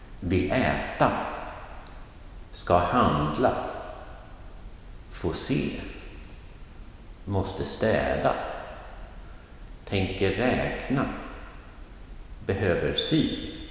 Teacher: in all of these examples, the hjälpverb is short and non-stressed